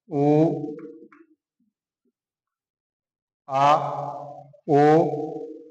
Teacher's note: इसमें जीवा का अंतिम भाग कार्य करता है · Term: पश्य स्वर